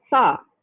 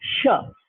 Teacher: so an alveolar sound like sa becomes a palatal sound sha when it occurs in front of a high front vowel